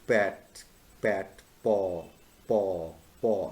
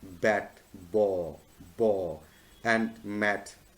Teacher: sounds that originate with the friction of two lips, and it basically originates here, over here. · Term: bilabial sounds